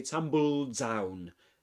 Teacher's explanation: We start pronouncing the d sound at the end of tumbled, but we only pronounce it, we connect it to the next d sound, and in a way we get only one d sound, and so we say tumble down.